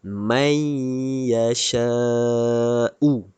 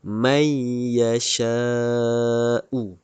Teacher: Cara bacaan idgham ma'al gunnah mestilah memasukkan sebutan nun sakinah atau tanwin ke dalam huruf selepasnya dan dibaca secara idgham beserta dengung. Bacaan idgham ma'al gunnah mestilah dibaca dengan memasukkan nun sakinah ke dalam huruf ya ini. Dan perlu didengungkan 2 harkat.